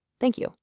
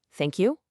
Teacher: If I say it with a falling pitch, thank you. It sounds pretty sincere, right? Like I really mean it.